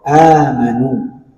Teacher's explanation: Nah, jadi definisinya di mana ada huruf hamzah yang berdampingan dengan huruf alif atau huruf mad, maka dinamakan mad badal. Panjangnya sama dua harakat.